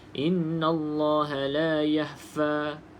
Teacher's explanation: Huruf kha yang sukun ni, apa yang terjadi, kesalahan yang biasa terjadi, iaitu bunyi huruf kha sukun tu tenggelam. Tenggelamnya bunyi dia jadi macam huruf ha